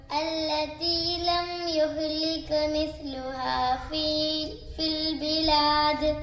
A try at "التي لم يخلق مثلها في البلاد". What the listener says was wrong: യുഖ്ലഖ് ഒന്ന് ഖാ ഒന്ന് പുള്ളിയുള്ള ഖാഫ് യുഖ്ലഖ് അല്ലതി ലം യുഖ്ലഖ് ലം യുഖ്ലഖ് എന്നും പറയാൻ പാടില്ല ഇവിടെ ലം യുഖ്ലഖ് അവിടെ സാക്കിനായ മീമിന് ശേഷം യാ ആണ് വന്നിട്ടുള്ളത് അപ്പോൾ അവിടെ ഇൽഹാർ ചെയ്യണം അതായത് വെളിവാക്കിയിട്ട് തന്നെ ഓതണം പിന്നെ ഖാഫ് ശ്രദ്ധിക്കണം അല്ലതി ലം യുഖ്ലഖ് മിസ്ലുഹാ ഫിൽ ബിലാദ്